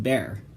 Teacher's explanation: if you voice at the same time you'll get a B sound as in bear